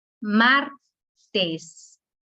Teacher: La sílaba tónica es mar, dos sílabas.